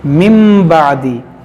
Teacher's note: यहाँ नून साकिन के बाद बा है, यहाँ पर इक़लाब होगा, इस नून को हम मीम पढ़ेंगे